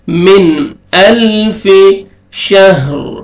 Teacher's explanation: نون ساکن کے بعد حروف حلقی میں سے حمزہ ہے، یہاں پہ آپ نے اظہار کرنا ہے